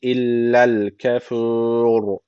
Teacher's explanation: Bir elif uzatıp öyle duruyoruz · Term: meddi arız